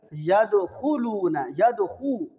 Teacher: خا کے اوپر پیش ہے اور واو کے اندر بھی ہونٹ گول ہوتے ہیں